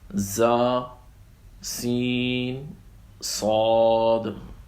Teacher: زا میں تھوڑی سخت سیٹی ہے اور سین میں ہمس ہے، اس میں باریک اور نرم سیٹی ہے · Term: حروف صفیریہ